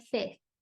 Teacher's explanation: the lips don't come forward